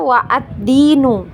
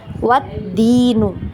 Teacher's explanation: ketika dia berada di tengah-tengah kalimat maka kita tidak baca ya kita anggap tidak ada hamzahnya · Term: Hamzah washal